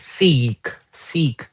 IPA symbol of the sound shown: iː